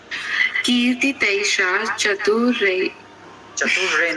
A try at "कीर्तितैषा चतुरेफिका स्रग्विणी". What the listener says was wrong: नहीं है, चतुरे। और प्रवाह में पढ़िए, फ्लो में। कीर्ति तैषा चतुरेफिका स्रग्विणी, ऐसे नहीं पढ़ेंगी।